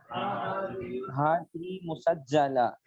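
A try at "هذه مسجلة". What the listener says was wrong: जीम को जेर दे दें। हादिही मुसज्जिला। हादिही मुसज्जिला।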